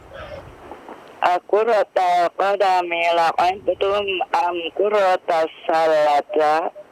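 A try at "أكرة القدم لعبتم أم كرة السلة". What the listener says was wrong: Am qurratas sallati. Nah, berakhiran kasroh dia.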